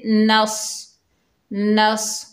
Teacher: नून के ऊपर ज़बर है, आगे सौद साकिन है, नून को सौद से मिलाएंगे। सौद हुरूफ़ मुस्तालिया में से है, हैवी लेटर है, मोटा अदा होगा। और जज़म वाला हर्फ जो होता है एक मरतबा पढ़ा जाता है अपने से पिछले मुतहरिक हर्फ से मिलकर।